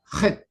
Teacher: Una consonante gutural áspera, porque a la hora de pronunciar suena como raspando, ¿no? Como raspando la garganta, ¿no?